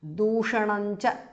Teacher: because of sandhi anuswara changes to n